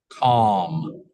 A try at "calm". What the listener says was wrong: No, we do pronounce it. It is not silent. Calm.